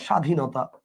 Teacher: ব ফলা আছে কিন্তু ব ফলার উচ্চারণটা আপনি করতেছেন না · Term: ফলার ব